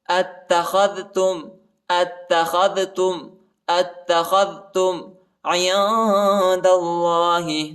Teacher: دال کو لام کے ساتھ ملائیں گے، اللہ کے نام کو موٹا پڑھنا ہے، ٹھیک ہے، اور لام کو شدت کے ساتھ پڑھیں گے اور ادھر اخفا ہے.